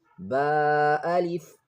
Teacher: Lips close for ba, then open and stretch it into alif. Ba, alif. No pressure, no popping sound.